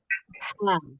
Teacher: ha yang dikeluarkan harus lebih tipis ya kalau yang dari tengah tenggorokan ya